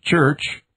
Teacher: it is a typically pronounced affricate. The heavily aspirated palatal sound, Ch. as in church,